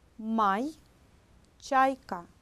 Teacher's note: 입 천장 중에서 단단한 부분, 앞부분에 혀를 대었다가 내는 소리입니다.